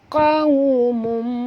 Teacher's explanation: Pangkal tekak, waw di sini sifatnya lin, lembut, uncungkan mulut